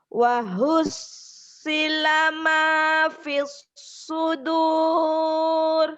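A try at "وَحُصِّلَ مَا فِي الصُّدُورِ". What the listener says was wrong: Itu belum tinggi. Ayo coba lagi 1 oktav lagi. Baru bagus.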